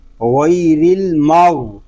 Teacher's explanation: غین حلق کے اوپر والے حصے سے ادا ہوگا، اور غین کو جب ادا کریں گے تو ہمارا حلق تھوڑا سا گھومے گا۔